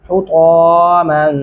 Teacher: हुता बारीक हा के साथ पढ़ेंगे